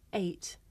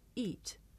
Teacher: it may be difficult to tell the difference between this diphthong A and the long vowel E